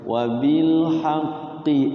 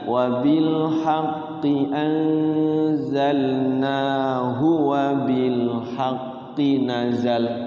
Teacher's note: awas hati-hati di ujung kalimat ya Qi hu Qi lam ya Jadi qinya enggak boleh dipanjangin Hunya enggak boleh dipanjangin Qi yang kedua enggak boleh dipanjangin